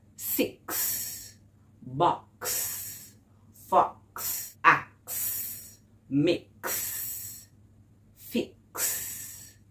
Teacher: the X is the sound of a K and an S coming together